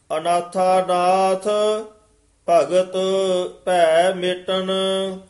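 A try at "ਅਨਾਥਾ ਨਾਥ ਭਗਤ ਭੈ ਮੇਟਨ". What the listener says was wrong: अनाथानाथ इथे अनाथा पद ते थोड़ा जा ठहरा दे के बोलना अनाथा नाथ इथे विश्राम भगत भै मेटन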